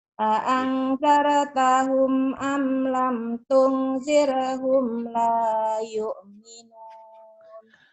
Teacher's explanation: Tungnya ikhfa, humnya ini lepas idhar.